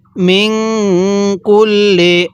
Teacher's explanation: নুন সাকিনের পরে কাফটি হলো ইকফার হরফ এজন্য আমরা নুন সাকিনটা গুন্নাহ করে পড়বো